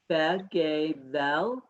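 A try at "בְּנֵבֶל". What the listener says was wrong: No. This is a nun.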